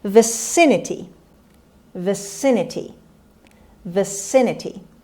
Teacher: the stress is on the second syllable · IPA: /vəˈsɪnəti/